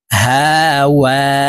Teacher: ওয়াও হরফ ঠোঁট গোল করে উচ্চারণ করতে হবে দুই ঠোঁটের মাঝে ফাঁকা থাকবে